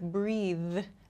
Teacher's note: this th sound at the end, I have to use my vocal cords to make this sound.